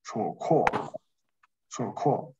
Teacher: 浊音第一组送气，所以读吃 ，吃以后呢先把吃算出来，然后吃呢元音是哦，那么后加字的导致它变成▁a，▁然后浊音是读第三调这个词对吧，然后第二